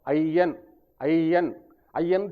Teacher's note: ஐயன் என்று சொல்கிற இடத்துல ஐ என்பது இரண்டு மாத்திரை ஒலிக்கும்